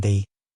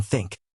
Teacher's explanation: There are two TH sounds, voiced, as in the, and unvoiced, as in think.